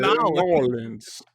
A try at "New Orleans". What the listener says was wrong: You're trying to get the R in there. It should just be Nolans, right?